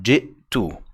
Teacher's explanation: the hamza in the middle is not voweled. It's not a or e, but rather it was that glottal stop, ji'tu. That is actually sukooned.